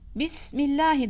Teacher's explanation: ba harfinde cehir sıfatı vardır arkadaşlar nefes ceryanı hapsolur